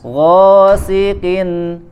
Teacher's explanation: Dan huruf qaf tidak disertai dengan keluarnya angin ya, tidak ada angin.